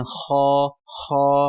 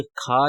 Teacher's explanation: کھا نہیں پڑھنا کیونکہ کھا جو ہے وہ غلط ہو جائے گا، ہم نے اس کو پڑھنا خا، حلق سے ادا کرنا ہے